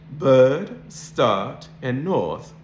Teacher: So if you listen to the words bird, start, and north, the R is not pronounced because it's followed by consonant sounds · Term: non-rhotic accent